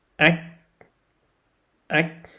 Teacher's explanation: when you say the CH, your tongue should be rising up in the middle part, but the K sound is a back consonant sound, so your tongue should be rising up on the back part.